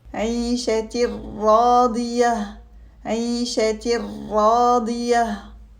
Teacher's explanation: We pronounce it من ربهم عيشة راضية. Here we have Idgham without gunna because the letter ra, which is a letter of Idgham without gunna, follows the tanween.